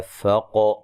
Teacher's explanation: قاف کو موٹا، فا کو باریک، قاف کو ہلا کے پڑھنا ہے۔